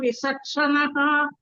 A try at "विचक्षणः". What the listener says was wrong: You're saying Sakaraha, Bhagini, there. You're saying Visaksanaha. It is not sa, sarpaha sa. It is charanam cha.